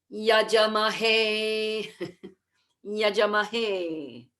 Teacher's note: the letter A after the J has to be long. So please write a horizontal stroke over that A.